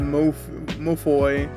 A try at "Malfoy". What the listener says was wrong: Mofo. No, there's supposed to be an L. Malfoy.